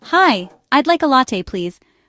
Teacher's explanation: Practice the intonation of a polite request. Your voice should rise slightly at the end of latte and please. Focus on the L sound at the beginning of latte.